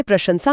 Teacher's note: प्रशंसा में पहला श तालव्य है और आखिरी स दंत्य।